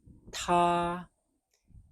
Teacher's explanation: They all pronounce as ta with the T, ta with a puff of air. Same sound, same tone, first tone, ta.